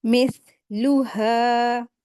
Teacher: हा को 2 हरकत खींचेंगे